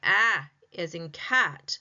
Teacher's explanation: When I say ah as in cat, my mouth is open because the tongue is lowered away from the roof of the mouth.